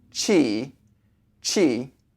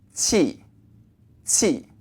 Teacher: that clenched sign you were pushing air through your teeth but your tongue is a little bit lower than Chi a little bit lower and forward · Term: Q sound